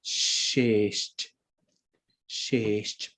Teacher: Both S's actually become slender.